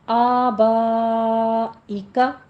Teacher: آبائکا، ابائکا نہیں ہے، آبائکا فتح قائمہ ہے اور با کے اوپر پھر 5 کاؤنٹ کرنے ہیں، مد متصل واجب ہے